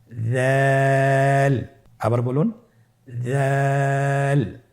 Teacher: দালের মাখরাজ হলো জিহ্বার আগা সামনের উপরের 2 দাঁতের আগার সঙ্গে লাগিয়ে উচ্চারিত হয়।